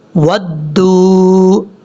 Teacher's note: دال کو جب باؤ سے ملائیں گے تو یہاں پر لمبا کریں گے ایک الف کی مقدار